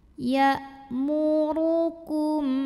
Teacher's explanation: Ya muru. Huruf ra dibunyikan secara tafkhim sebab ra berbaris dhammah. Cara membunyikannya ditebalkan. Pangkal lidah kita angkat.